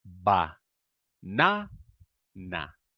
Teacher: notice how I maintain the quality of the a sound on the unstressed syllable